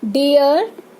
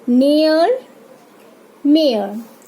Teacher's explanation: डियर, ई अ sound निकल रहा है.